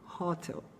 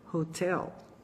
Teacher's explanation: A maioria dos alunos falaria hotel, mas o correto é hotel, com o stress do sílabo lá para o finalzinho